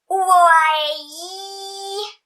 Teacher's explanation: la llengua està molt més amunt en la I que en qualsevol de les altres vocals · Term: la més palatal